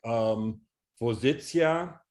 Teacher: in words like vozitsia, that is a palatalized sia at the end. Yep. Whereas in Russian, it would be vozitsa or something.